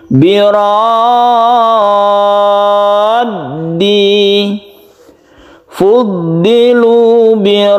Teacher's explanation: Mutawal artinya dipanjangkan. Jadi kita membaca ro dulu yang panjang sampai 3 alif. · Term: mad lazim mutawal